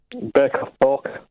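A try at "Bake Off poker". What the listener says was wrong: Yeah, you're saying porker. It doesn't sound like that to you, but that's what...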